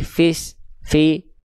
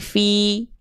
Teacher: tengah lidahnya diangkat diarahkan ke langit-langit biar vokal i-nya jelas